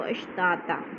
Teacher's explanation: यौमइदिन यसदुरुन्नासु अश्ताता, अश्ता पे भी अलिफ मद्दा और ता पे भी अलिफ मद्दा, और दूसरी ता यानी दो ज़बर तनवीन वाली ता को वक़फ़ की सूरत में अलिफ में बदल देंगे। अगर आगे अगले लफ्ज़ के साथ मिलाएंगे तो फिर अश्तातल्ली पढ़ेंगे, अगर वक़फ़ करेंगे तो अश्ताता, लेकिन मिलाकर पढ़ेंगे क्योंकि ऊपर ला आ गया है तो इधर वक़फ़ नहीं हो सकता।